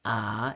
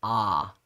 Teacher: The ayin is like an aleph in that it takes whatever vowel it's put with, but it kind of throws it further back in the throat. So instead of being ah, it's ah.